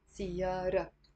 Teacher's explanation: سيارة on its own, سيارة means car. And usually we don't pronounce the T مربوطة